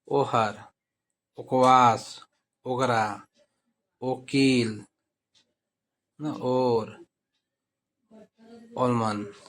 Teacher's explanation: ओ जो है कंठ से और ओठ के मेल से उच्चारण होता है इसका भी। तो इसका उच्चारण कहेंगे ओ हार, जैसे उच्चारण करते हैं वैसे है, हिंदी में जैसे करते हैं उसी तरह से यहाँ भी उच्चारण होगा।